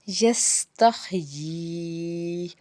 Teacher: یا کے اوپر آپ کو مد نظر آ رہی ہے تو اس کا مطلب ہے ہم نے 3 الف کے برابر اس کو ہم نے کھینچ کے ادا کرنا ہے